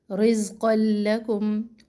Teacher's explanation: رزقا لکم، زا میں سختی اور زا میں وائبریشن بھی ہوگی. رزقا لکم، قاف تنوین کو لام مشدد سے ملائے